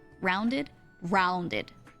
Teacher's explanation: a lot of Canadians will have rounded open vowels very rounded and open